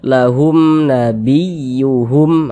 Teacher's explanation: humnya tuh jangan dipanjangkan, pendek saja, dia tidak didengungkan, tidak digunakan, pendek saja.